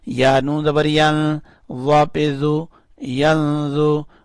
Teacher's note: نون کے اوپر اخفا کرنا ہے یعنی نون کو تھوڑا سا چھپانا ہے